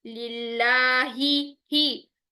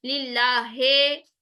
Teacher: जो जेर की कसरा की साउंड होती है वो ई की साउंड में होनी चाहिए, लिल्लाहे नहीं होना चाहिए, लिल्लाही।